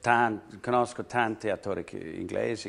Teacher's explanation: Often the vowels right at the end, they just kind of get lost in the mix. So I think he could improve a bit by just pronouncing those a little bit more clearly wherever they come in the word.